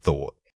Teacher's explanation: Remember to initiate this sound by blowing a steady stream of air. The unvoiced requires minimal vocal cord vibration, making it feel like an airy whisper.